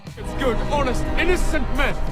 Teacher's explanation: Vous n'allez pas entendre le H. Le mot commence par le son A.